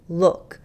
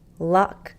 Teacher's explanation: for me look the back part is higher luck the middle part goes up